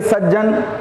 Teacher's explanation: त के बाद ज आए तो त का ज हो जाता है